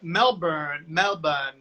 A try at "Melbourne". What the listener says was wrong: Melbourne. You don't pronounce the R.